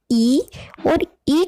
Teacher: ठीक है, तो जब हम ई और ई का उच्चारण करते हैं तो हमें अपनी जीवा पर ध्यान दीजिए, वो ऊपर की तरफ टच हो जाती है। ठीक है, जब हम ई और ई का उच्चारण करते हैं तो हमारी जीवा का जो अग्रभाग होता है वो बहुत ज्यादा ऊंचाई पर चला जाता है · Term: संवृत स्वर